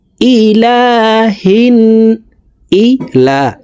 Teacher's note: লাম হরফটি এক আলিফ টানে পড়ব